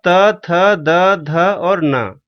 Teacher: ये त वर्ग के अक्षर हैं। इनका उच्चारण स्थान दांत से होता है।